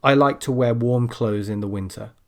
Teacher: There, I dropped the th and you probably didn't even notice